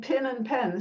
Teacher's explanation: the merger between pin and pen, saying pin and pen the same way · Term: pin-pen merger